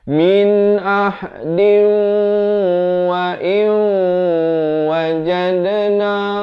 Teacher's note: Dal bila tanwin bertemu waw kena baca idgham bi gunnah.